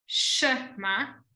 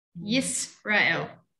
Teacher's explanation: Its job is to say, it's a silent vowel, therefore just work with the letter. But sometimes you voice it out, Shema, and sometimes you close off, Yisrael.